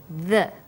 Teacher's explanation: when you say the, your tongue is between your top and bottom teeth